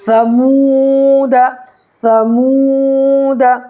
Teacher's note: واو ساکن سے پہلے پیش ہو تو واو مدہ ہوگا، اس کو 1 الف برابر کھینچ کر کے پڑھیں گے